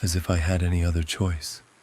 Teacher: Doesn't sound right, does it? It's all in one register. Like there's no inflection.